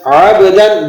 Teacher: عبدا اذا صلی، لفظ ہے عبدا، عین با زبر عب، دال دو زبر دن، عبدا، با پہ قلقلہ ہے اس لیے آپ با کو تھوڑا سا ہلا کر ادا کریں گے۔ عبدا، یہ دال کے بعد الف لگا ہوا ہے، اس کا دھیان رکھیں۔